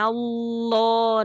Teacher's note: di lafal jalala harus tebal ketika dia sebelumnya fathah